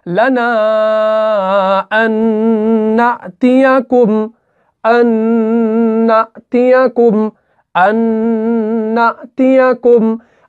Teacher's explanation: यहां पे नून साकिन के बाद नून मुशद्दद आ रहा है, तो यहां पर इदगाम होगा, गुन्ना के साथ होगा। · तो ये नून साकिन और ये वाले 2 नून हो गए 3 नून। लेकिन हम जब पढ़ते हैं हम सिर्फ 2 ही नून को पढ़ते हैं।